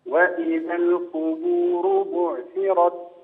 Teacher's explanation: الراء المتحركه بالضم بين تفخيمها اكثر